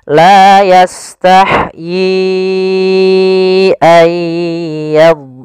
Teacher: awalnya yi 2 harokat bertemu hamzah, maka menjadi 4 harokat. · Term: mad jaiz munfasil